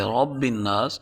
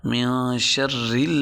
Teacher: جیسے ہم پیچھے قل اعوذ برب الناس میں را کو پر پڑھتے تھے، رب الناس، یہاں ہم را کو باریک پڑھیں گے، اس لیے کہ را کے نیچے اگر زیر ہو تو را باریک پڑھی جاتی ہے۔